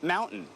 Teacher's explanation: standard American English is not to pronounce the T and then end with a nasal sound, mountain. He says what is more unique, but not exclusive to Utah, is change that by releasing the air through your mouth and having more of a vowel sound, mountain.